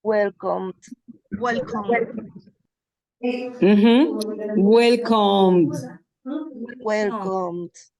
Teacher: aquí la D se está comiendo el sonido de la E